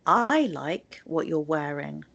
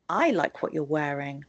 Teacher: I put the stress at the beginning on the word I